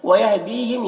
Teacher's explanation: یہاں پر یا مدہ ہے، ایک الف کے برابر کھینچیں گے، ہم کے میم اظہار شفوی ہو رہا ہے، اسے جلد پڑھنا ہے۔